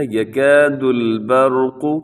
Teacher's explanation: یہاں پر را کو اپنے موٹا پڑھنا ہے کیونکہ را ساکن سے پہلے زبر ہے